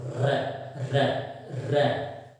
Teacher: रे के उच्चारण में जिह्वा बार बार ऊपर नीचे होती है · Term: प्रकंपित ध्वनि